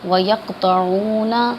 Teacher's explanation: طا کی آواز نکلے گی، تا کی نہیں نکلے گی